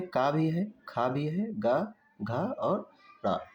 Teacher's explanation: ये सारे किससे उच्चारित होते हैं? कंठ से